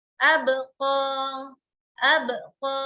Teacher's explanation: Ketika kita ucapkan ba, ab, tidak ada udara atau angin yang keluar.